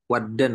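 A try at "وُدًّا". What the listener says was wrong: Wud, ya, domah fu'lan, wuddan, nah, wuddan.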